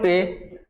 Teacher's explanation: ए का उच्चारण स्थान जो होता है हम करते हैं कंठोर तालु से